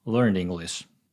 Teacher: when I'm saying “ed”, my tongue is already at the position for the next vowel. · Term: word connections